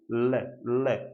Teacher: जीवा का अगला भाग है वो मसूड़े के साथ टच हो जाता है, और जीवा के किनारों की तरफ से हवा घर्षण करती हुई जब बाहर निकलती है, आप लय बोल के देखिएगा। लय, लय, आपकी जीभ का अगला पार्ट मसूड़े के साथ टच हो चुका है। लय, लय, और साइड में घर्षण करती हुई हवा बाहर निकलती है, तब ये पार्श्विक वर्ण कहलाता है।